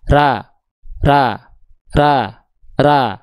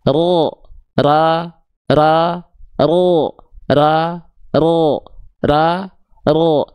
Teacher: Ra ra. Tapi kalau kita angkat pangkal lidah dengan bibir yang sama enggak monyong ra menjadi ro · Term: huruf tebal